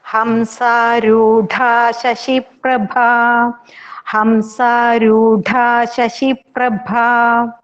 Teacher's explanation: Here रूढ़ा dha is mahaprana and prabha bha is mahaprana.